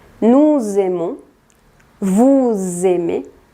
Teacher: Cuando tienen una S y después empieza con vocal, se pronuncia como z.